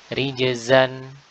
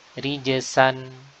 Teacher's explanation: jadi huruf zai ini bergetar pita suara kita, sedangkan kalau huruf sin maka tidak digetarkan pita suara. Rijzan dengan zai, rijsan dengan sin.